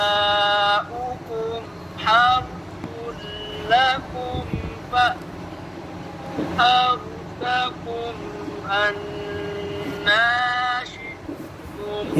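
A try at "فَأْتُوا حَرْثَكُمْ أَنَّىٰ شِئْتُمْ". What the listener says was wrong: ये क्या पढ़ा फ़अतू सही नहीं पढ़ा।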